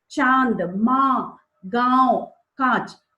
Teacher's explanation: नासिक का मतलब नाक होता है, तो इसके साथ मिलकर के, नाक की हवा के साथ मिलकर के इसकी आवाज निकलती है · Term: अनुनासिक